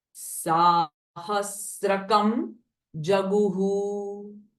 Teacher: it is not stra, but it is sra